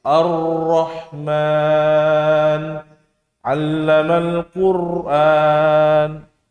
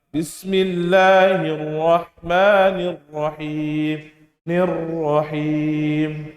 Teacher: Artinya bergetar. Bergetar ini kadarnya adalah 1 sampai 2, ya, tidak banyak. Dia tidak boleh berlebihan. Antara 1 sampai 2 getaran saja. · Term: takrir